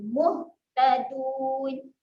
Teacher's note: Huruf ha ada sifat keluar angin ketika mati.